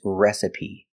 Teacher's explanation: is pronounced with a long e like green beans recipe so the first syllable is a short e like red and bed re s the second syllable is a short sound I like